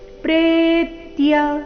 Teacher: ಪ್ರೇ ದೀರ್ಘ ಬಂದು ನಂತರ ಆಘಾತ ಬರಬೇಕು ಪ್ರೇತ್ಯ ನತು ಸನ್ಯಾಸಿಂಗ್ ಕ್ವಚಿತ್ ನತು ಎರಡು ರಸ್ವ ನತು ಈ ರೀತಿ ಬರಬಾರದು